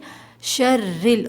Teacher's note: را پہ زیر ہے، یہاں ہم باریک پڑھیں گے۔